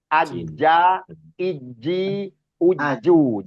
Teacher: Huruf jim itu bertemunya tengah lidah dengan atas langit-langit atas. Aja, iji, uju, jim, aja.